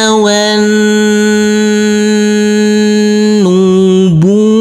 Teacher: Huruf nun kita tekan dan kita tahan serta kita dengungkan karena ini adalah bacaan ghunnah.